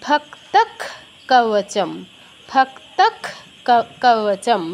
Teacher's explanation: বিসর্গের জায়গায় আমি ক্ষয় হসন্ত উচ্চারণ করব।